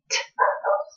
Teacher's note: you will not be able to feel a vibration when you say t